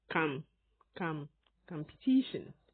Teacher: americans however pronounce the first syllable with the ah sound